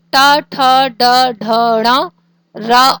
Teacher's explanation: उच्चारण स्थान मूर्धा और मूर्धा से बोले जाने वाले वर्ण है